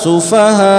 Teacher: Sufaha kita naikkan untuk memperjelas hamzah yang waqaf itu, hamzah yang sukun. Karena kalau kita tidak naikkan seperti itu, dia tidak akan jelas huruf hamzahnya. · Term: nabr